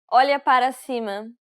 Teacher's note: It should sound like an L and a Y sound. Remember, you want to use the middle part of the tongue to contact the roof of your mouth.